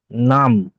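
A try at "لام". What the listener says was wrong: নাম, নাম নয়, লাম। নাম নয়, লয় আকার মো, লাম।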